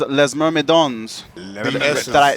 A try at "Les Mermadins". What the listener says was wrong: The S is silent. Les Mermadins.